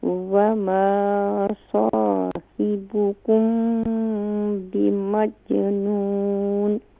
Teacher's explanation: صاد کے بعد الف ہے تو یہاں ایک الف کی مقدار کھینچیں گے بھی اور صاد کو فل ماؤتھ بھی کریں گے · مجنون میں جو جیم ہے یہاں پر قلقلہ کریں گے